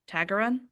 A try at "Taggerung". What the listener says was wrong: You don't pronounce the G. Taggerung.